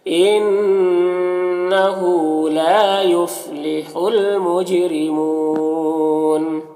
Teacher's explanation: یہاں پر الف لام حروف قمری میم کے شروع میں تو لام کو پڑھیں گے، الف کو نہیں پڑھیں گے۔ جیم میں قلقلہ کریں گے، اور را کے نیچے زیر ہے، را کو باریک پڑھیں گے